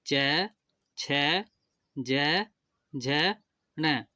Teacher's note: च वर्ग का उच्चारण स्थान तालू होता है